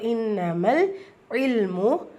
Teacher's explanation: நூன் சுக்கூனுக்கு அப்புறமா letter தால் இருக்குது. இஹ்ஃபாவுடைய சட்டம், நூனை பாதியை மறைச்சி குன்னா செஞ்சு ஓதணும்.